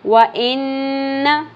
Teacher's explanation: نون پہ تشدید ہے، غنہ ہوگا، آواز کو ناک میں ٹھہرانا ہے